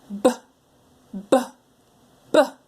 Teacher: I'm gonna do the B sound my lips are gonna pop